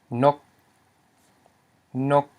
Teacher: we have a low consonant, n, followed by a short vowel, o, and a dead consonant, a dead syllable, which is g, because it's a stop. So it equals a mid-tone.